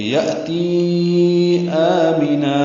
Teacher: تی مد منفصل ہے کیونکہ یہ یا مدہ ہے، اور اس کے بعد آ میں نا کا کھڑا زبر حمزہ آیا ہے تو تی کو لمبا کریں گے